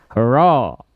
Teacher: Huruf ro memang getarannya tidak banyak, tapi getarannya tetap tegas, lugas dan jelas.